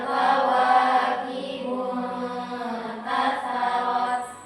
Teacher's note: dari kata intafarat itu ta ujung lidah ke pangkal gigi dari atas. Nah, kemudian ta itu turun ujung lidah ke arah ujung gigi dari atas.